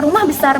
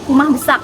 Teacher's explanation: menuturkan kata rumah besar menjadi kumah besak, seperti yang diketahui juga bahwa bunyi R adalah bunyi konsonan apiko-alveolar getar, sedangkan bunyi K adalah bunyi dorsovelar